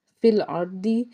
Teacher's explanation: را ساکن سے پیچھے زبر، تو را کو پر پڑھیں گے